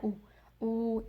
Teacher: हरकतैन अरबी में कहते हैं 2 सेकंड स्ट्रेच करने को, मतलब 2 हरका लंबा करना है। मीन्स यहाँ आइन के ऊपर दम्मा है तो आपने आइन को 2 सेकंड स्ट्रेच करना है। ऊ, इस तरह करके आपने इसको फास्ट नहीं पढ़ना है, ऊ ऊ, इस तरह आपने इसको पढ़ना है।